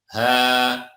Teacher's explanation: Ada huruf H di sini dibaca dua harokat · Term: mad tabi'i